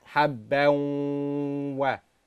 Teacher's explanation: So then we joined it habbaw, and because it was one of the four letters of yanmu, we made it, we had to apply gunnah for two harakat